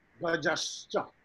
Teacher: the Visarga turn into Sha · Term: Visarga Sandhi